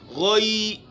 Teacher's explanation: غین اور خا، یہ اس کا مخرج ہے اقصی حلق، یعنی حلق کا وہ حصہ جو منہ کی طرف ہے، منہ کی طرف یعنی تھوڑی جہاں ختم ہوتی ہے بالکل یہ ہڈی سے اوپر تھوڑی گئی نیچے، اس سے غین اور خا ادا ہوتے ہیں۔